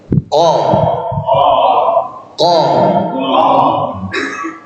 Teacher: Kemudian habis makhraj ini pangkal atau pangkal lidah, yaitu huruf qaf yang nempel di langit-langit yang berdaging lunak gitu ya. Qa.